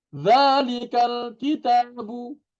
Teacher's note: Tetap dibaca panjang dua harokat. Itu dua ketukan.